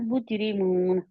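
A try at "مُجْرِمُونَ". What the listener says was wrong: मून कह के नून को छोड़े ना, आप कर रहे हैं, उसके मखरज से बाहर जा रहे हैं। नहीं, आप नून, आपने ज़ुबान उधर ही लगी रहने दें नून के मखरज पर।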